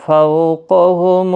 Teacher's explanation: فو واولین ہے، تھوڑا نرمی کے ساتھ آدھی الف کی مقدار کے برابر کھینچ کر پڑھیں۔